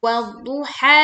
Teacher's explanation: Panjang 'ha' adalah dua harakat. Dan biarkan suara panjang itu lenyap ke udara.